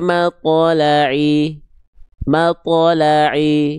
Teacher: yang kedua vokal i-nya kurang jelas